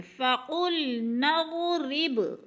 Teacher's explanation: ہے، موٹا کر کے، فَقُلْ نَضْرِبْ، رب پہ قلقلہ کرنے ہے، با حروف قلقلہ میں سے ہے، ہلا کے پڑھنا ہے ، قلقلہ کا معنی ہوتا ہے کہ لفظ کو ہلا کر